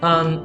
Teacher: Conjunction, usually we use the weak form. So it's going to be an rather than and. So we don't pronounce the letter D there.